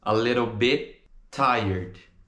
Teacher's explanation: nesse bit a gente não pronuncia o som do último T. Você vai falar B e vai colocar a língua no céu da boca.